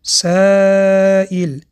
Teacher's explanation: ببینید دوستان، کلمه سائل بعد از حرف الف همزه آمد و علامت قرآنیش در بالای الف خطی ناهموار است. به مقدار 4 حرکت کشیده میخونیم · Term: مد متصل